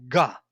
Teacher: back tongue g, there I touch and I give voice and it will be g